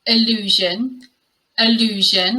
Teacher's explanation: I was asked by a subscriber to include these in my next pronunciation video to demonstrate the subtle difference in the pronunciation of these two words. So the first word is allusion, allusion with the schwa at the beginning